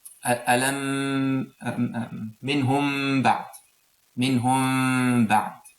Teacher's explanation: We hide the mim, we don't touch the 2 lips together, we just leave a little distance, and then we make ghunna for 2 units of time. · Mim sakina followed by ba. So this is called ikhfa shafahi, has ghunna for 2 units of time